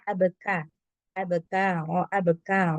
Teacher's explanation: ada angin sedikit ketika mengucapkan huruf Kaf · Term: hams